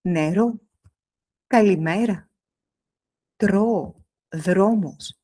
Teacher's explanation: Le R n'est pas dans la gorge, il est devant. Juste derrière les dents du haut. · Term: R grec